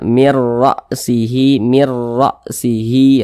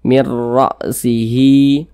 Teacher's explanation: huruf rnya ini dibaca tebal dibaca takhim karena dia memiliki tanda baca fathah jadi ketika Kita mengucapkannya itu pangkal lidah kita ya itu naik